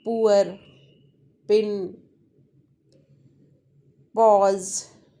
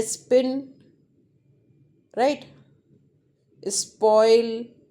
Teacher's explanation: all words which start with P then there will be a puff of sound puff of air which is aspirated sounds